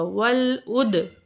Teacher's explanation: واو زبر لام ول، عین پیش دال اد، واو ساکن ہے، عین پیش دال اد، دال حروف قلقلہ میں سے ہے اور دال میں دال ساکن ہوگی تو اس میں قلقلہ ہوگا، ول اد، آواز جاری رہے گی.